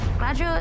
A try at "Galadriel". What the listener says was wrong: Galadriel. We're not just not bothering to roll the R's anymore. We've somehow squashed a name into one syllable.